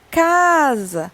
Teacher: cá vai ser a minha sílaba mais forte